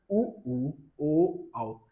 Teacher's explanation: वे स्वर जिनका उच्चारण करते समय ओष्ठ गोल हो जाते हैं अर्थात वृत्त जैसी आकृति ग्रहण कर लेती है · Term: गोलाकार